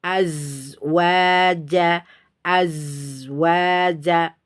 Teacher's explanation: Azwaja, azwaja, itu suara yang mengalir, bukan udara. Nah, suara mengalir keluar dari dua celah gigi seri atas dan bawah. Azwaja, seperti itu. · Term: rohwa